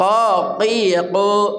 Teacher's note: qof dari pangkal kerongkongan kita